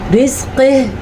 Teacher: رِزْقِهِ موٹا قاف اور ہا کو چھاتی سے نکالیں گے